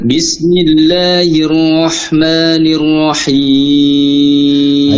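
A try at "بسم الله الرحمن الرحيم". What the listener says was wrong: Hati-hati untuk roknya, jangan masuk hidung ya. Jangan Bismillahirrahmanirrahim. Jangan masuk hidung. Bismillahirrahmanirrahim. Ar-ra. Jangan masuk hidung.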